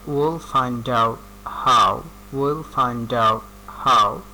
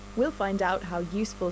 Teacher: টি প্রথম শব্দের শেষে টি এবং তার পরবর্তী শব্দ শুরু হয়েছে কি দিয়ে, কনসোনান্ট দিয়ে। এর কারণে টি কি হয়ে গিয়েছে, সাইলেন্ট হয়ে গিয়েছে।